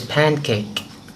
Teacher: when it's joined to form the word pancake, many people pronounce the N now as a velar nasal